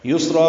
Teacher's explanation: یسرا میں سین ساکن پہ ہمس ہے، سین صفیر کی آواز سے ادا کریں گے، را پر پڑھیں گے، الف مدہ ہے، 2 حرکات لمبا کریں گے